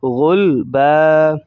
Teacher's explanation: اینڈ کے لفظ پر اگر 2 زبریں آ جائیں تو وقف کے بعد اسٹاپ کی صورت میں اس لفظ کو ایک الف کے بقدر کھینچ کر پڑھا جاتا ہے۔ تو یہاں پر الف بھی لکھا ہوا ہے، تو یوں سمجھ لیجئے کہ یہ الف بھی وقفاً کے بعد اسٹاپ جب کریں گے تو یہ الف بھی پڑھا جائے گا۔